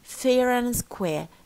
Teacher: how about the final R here in square in RP they do not pronounce it so you say fair and square they retain the first R · they retain the first R because it's followed by a vowel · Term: linking R